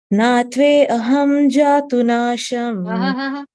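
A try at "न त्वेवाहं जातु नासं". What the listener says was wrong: Natve aham. Why aham? Natve vaham. Don't break. Natve vaham.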